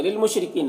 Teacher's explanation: کاف میں بھی الف مدہ ہے، ایک الف کے برابر کھینچیں گے۔ للمشرکین، را کے نیچے زیر ہے، را کو باریک پڑھیں گے۔